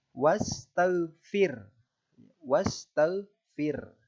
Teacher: Kalau ro tafkhim tadi dibaca tebal, kalau ro tarkik dibaca tipis. Cara membacanya adalah huruf ro dibaca tipis dengan menarik bibir sedikit mundur. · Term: ro tarqiq